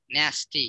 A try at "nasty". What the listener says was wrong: Right? Nasty, yep.